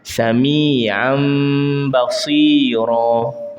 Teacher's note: Tapi sebabkan iklab ini bunyinya mim, tetapi kita ringankan sikit. Rapat tapi ringan.